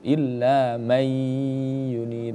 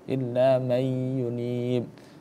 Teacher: Tapi kemudian karena dia diidghamkan ya, maka masuk ke dalam huruf ya. Nunnya gak terbaca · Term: idgham bighunah